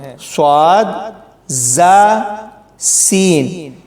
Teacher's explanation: یہ والے 3 سیٹی والے حروف ہیں، صاد، زا، سین، یعنی ان کو پڑھتے ہوئے سیٹی کی آواز سنائی دیتی ہے